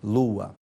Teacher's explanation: o n intervocálico desaparece formando a nossa palavra lua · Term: síncope